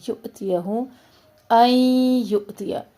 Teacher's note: نون ساکن کو یا میں مرج کر رہے ہیں تو ادغام مع الغنہ. یؤتیہ حمزہ پہ ڈٹ کا سنگل حرکات ہے آگے، کوئی حرکت لمبی نہ ہو.